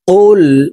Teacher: জিহ্বার গোড়া তার বরাবর উপরের তালুর সঙ্গে লাগাইয়া উচ্চারণ করব